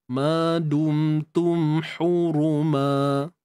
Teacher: cuma pada ra tu lah kena angkat pangkal lidah untuk hadirkan sifat tebal